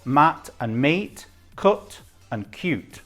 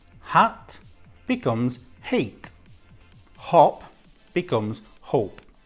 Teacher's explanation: the vowel sound before the consonant becomes long and returns to the pronunciation that we use for its alphabet name